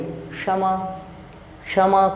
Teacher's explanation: आप बोलिए क और श को मिलाकर बोलिए क्षमा